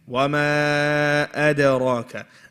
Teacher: Dal is a light letter. Ra is the heavy letter.